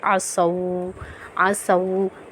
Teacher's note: مشدد حالت میں ہے تو ہم پڑھیں گے عصوا، عصوا، تو اس واو لین کی واو کو نہیں پڑھیں گے، ہم مشدد والی واو کو پڑھیں گے